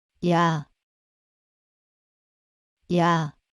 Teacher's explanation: to pronounce yah you can start with E and move to the sound of ah